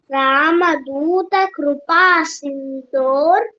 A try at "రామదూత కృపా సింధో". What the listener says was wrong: అక్కడ రామ దూత కృపా సింధో సింధో సింధోర్ లేదు సింధో